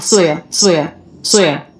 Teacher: the word so is not pronounced so with the oh diphthong